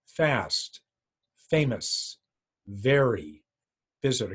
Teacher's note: F and V top teeth and bottom lip